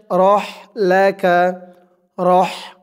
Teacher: হার আওয়াজটা গলার ভিতর থেকে চিকুন হয়ে আসবে, আওয়াজটা বের হবে ফ্যাস ফ্যাস এরকম শব্দ হয়ে